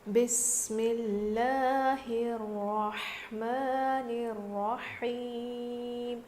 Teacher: پہلے زیر ہے تو ہم لفظ اللہ کے لام کو باریک پڑھ رہے ہیں، اور یہاں پر را پر تشدید ہے تو ہم اس کو موٹا پڑھیں گے۔ · یہاں پر بھی را پر تشدید ہے تو اس کو ہم موٹا پڑھیں گے